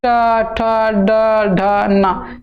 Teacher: ट ठ वाला जो है थोड़ा सा मुड़ता है और दांत में ऊपर वाला हिस्सा में सड़ता है ठीक है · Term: मुर्धा